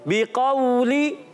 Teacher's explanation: काफ उर्फ़ मुस्तालिया में से मोटा अदा करेंगे। वाव साकिन से पहले ज़बर आ जाने की वजह से कायदा लगता है।